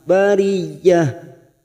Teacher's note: masuk pada huruf ya yang bertasdid hanya masuk tanpa ditekan lama-lama